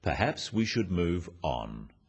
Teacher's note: The first one, "Perhaps we should move on," is phrased as a suggestion, but it is said in a firm way with a falling intonation at the end.